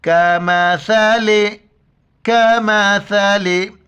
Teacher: छोटी काफ है, बारीक पढ़ेंगे और सा के वक्त ज़बान बाहर निकालें